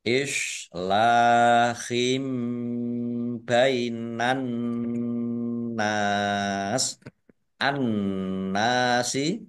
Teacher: An-nasi alif lam syamsiah karena tidak dibaca langsung masuk ke huruf berikutnya yaitu nun ditandai nunnya ada tasdidnya. Nun tasdid dibaca gunah atau mendengung ditahan 2 harokat biar tampak dengungannya. Nun fathah alif mat tobi'i tetapi karena bertemu dengan huruf terakhir yang dibaca sukun karena waqaf maka menjadi mat arid lis sukun.